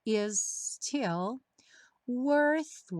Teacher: Juntando os dois s fica um s um pouquinho mais longo mas não tem dois ataques